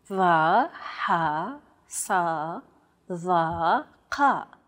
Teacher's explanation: They sound like the D, H, S, T, and Q sounds respectively, except much more tense because the throat is constricted. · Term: emphatic consonants